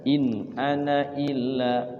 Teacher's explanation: ana walaupun ada alifnya dibaca pendek